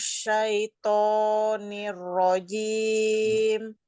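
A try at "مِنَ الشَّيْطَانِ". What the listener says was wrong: Pokoknya masih kepanjangan. Shinnya tambahkan dikit lagi.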